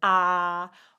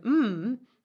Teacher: it can go through your mouth and go like ah or it can actually come through your nose so if I said an M the sound is exiting through